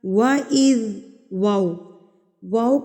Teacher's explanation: वा को आपने होठों की गुलाई के साथ अदा करना है वा अदा करते वक्त आपके होठ इस हद तक गोल होने